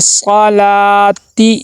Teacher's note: آگے دیکھیں لام کے آگے الف مدہ ہے، الف مدہ کو ایک الف کے برابر لمبا کر کے پڑھیں گے. صلاتی، تا کے نیچے زیر ہے، حرکات غیر مدہ میں سے ہے، اور تا کے نیچے زیر ہے، زیر کو معروف ادا کرنا ہے.